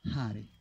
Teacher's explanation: Hare si pronuncia come gli olandesi, con l'H, proprio l'H aspirata.